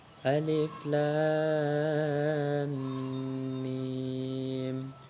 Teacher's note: Cara membacanya harus dibaca dengan nama hurufnya dan panjangnya sampai 3 alif. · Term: mad lazim musyakkal harfi